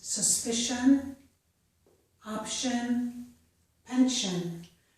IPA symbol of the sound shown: ʃən